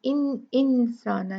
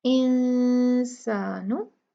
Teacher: हम 2 काउंट गुन्ना करेंगे और नून को क्लियर यानी इंसाना नहीं पढ़ेंगे, इंसानु ऐसे पढ़ेंगे।